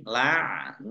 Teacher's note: Allahnya dibaca tebal karena harokat di depannya fathah. Lam fathah berdiri mat tabi'i, panjang 2 harokat.